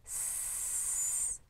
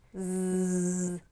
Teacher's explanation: So when we think about sounds like S and Z, S, our voice is off, and Z, our voice is on.